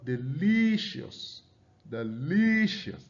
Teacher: you can see the li sound there is stressed. The syllable li is stressed.